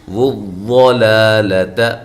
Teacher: ضاد کو موٹا کرنا ہے، لام باریک ہے، دونوں لامیں باریک ہیں